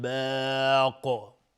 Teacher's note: قاف اگر توقف کردیم قاف قلقله میخواد و از حروف استعلاست، میگیم باق و باق مد عارض للسکون میشه.